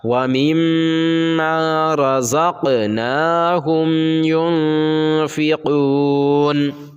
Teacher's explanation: مما مما ينفقون، دیکھیے ينفقون، یہاں ہم نے اخفا اور غنہ دونوں کیا، کیونکہ نون ساکن کے بعد آپ نے نورانی قاعدے میں اخفا کے قاعدے میں پڑھا کہ نون ساکن کے بعد اگر حروف اخفا کے 15 حرفوں میں سے کوئی بھی حرف آ جائے تو نون کی آواز کو ناک میں چھپا کر پڑھنا چاہیے، نوکے زبان تالو سے ہٹا کر۔ تو یہاں دیکھیے نون ساکن ہے، نون ساکن کے بعد حروف اخفا کے 15 حرفوں میں سے فا ہے، اس لیے یہاں اخفا ہوگا۔